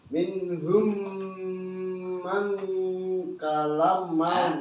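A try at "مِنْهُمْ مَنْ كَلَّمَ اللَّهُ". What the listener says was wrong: Lamnya tasydid. Bukan kala, tapi kalla. Lamnya ditekan. Kal tasydid. Kallama.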